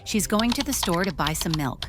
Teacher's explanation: the stressed words are going store, buy, and milk. Everything else is quieter and faster.